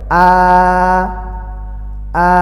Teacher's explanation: আ আ খাড়া জবর আছে, এক আলিফ টানতে হবে